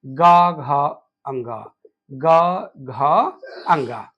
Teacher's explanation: जिनमें तंत्रिका का कंपन हो उसे हम सघोष कहते हैं और यह प्रत्येक वर्ग के आखिरी के तीन वर्ण होते हैं।